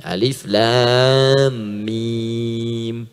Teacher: Dari hawa ke lisan ke bibir, alif, lam, mim, setelah Al-Fatihah. Alif harful hawa, lam ke lisan, mim di bibir.